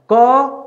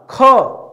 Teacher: कि कौन सा अल्पप्राण है कौन सा महाप्राण है क अल्पप्राण ख हवा ज्यादा निकला महाप्राण